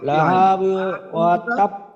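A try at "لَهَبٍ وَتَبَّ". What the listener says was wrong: Right right, লাহাবিওর হাতে টান হয়ে গেছে।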